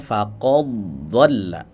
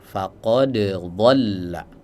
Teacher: dalnya diidgamkan ke huruf dod karena makhrajnya berdekatan